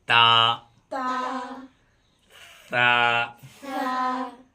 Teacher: سرا زبان اوپر کے سامنے والے دانتوں کی جڑ سے ادا ہوتا ہے تا تا سرا زبان کا سرا اور دانت کا سرا یہ